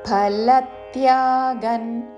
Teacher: అనుస్వారము తావర్గంలోని అనునాసిక అన్ ఉచ్చారణ